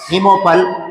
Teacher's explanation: इसमें अ और उ जुड़ कर के ओ बन गया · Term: गुण संधि